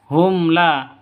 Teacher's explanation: Mim mati bertemu dengan lam, hum la, jadi jelas terang karena izhar safawi.